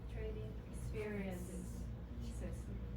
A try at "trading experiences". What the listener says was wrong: Good. You missed the S just now. During her presentation, she did it orally correct, but it's missing here. Your oral presentation was correct, but one word was missing here.